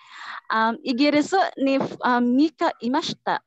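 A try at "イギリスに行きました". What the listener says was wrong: Hi, mika, no? Double K na.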